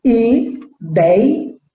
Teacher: A sílaba que exige mais esforço, a sílaba tônica, é o dei, é um ditongo aberto, portanto, não tem acento.